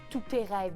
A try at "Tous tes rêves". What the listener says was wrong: Je pense qu'on ne prononce pas le T de tout.